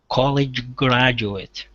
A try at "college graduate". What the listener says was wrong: There you go. Good, good.